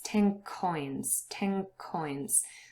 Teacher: the tongue moves back there's no contact anymore with the tip of your tongue behind your teeth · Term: assimilation